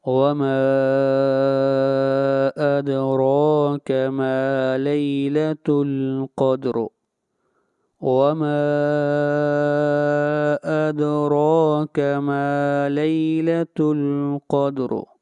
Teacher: ما کے اوپر مد منفصل ہے، اس مد کو 3 الف کے برابر کھینچ کر پڑھتے ہیں